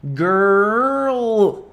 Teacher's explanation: a língua tá lá atrás e ela tem que fazer um movimento rápido lá pra frente da boca